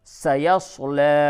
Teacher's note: یہ سین میں سیٹی کی آواز نکلتی ہے